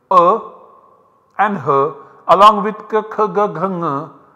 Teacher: a and h, along with k, kh, g, gh, ng, they are produced using kantha.